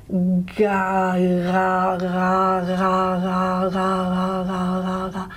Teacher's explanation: feel where your tongue is for g. In the velar region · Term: approximant